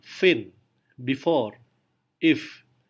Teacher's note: Ini adalah fricative tipe voiceless labiodental fricative. Labiodental karena untuk memproduksi suara f, kita harus menyentuhkan gigi bawah dengan bibir atas.